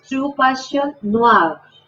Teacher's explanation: Entonces sería true passion noir. Y esa R tiene que ir a la garganta, ¿cierto? Es una R gutural.